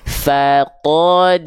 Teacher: Fanya tipis dalnya tipis ainnya tipis qnya tebal rnya tebal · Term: tebal tipis